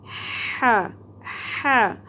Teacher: وسط حلق میں سے اس طرح ادا کرنا ہے، just like a sound of breathing